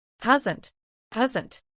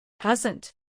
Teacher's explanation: there is an S but it sounds a little bit more like a z sound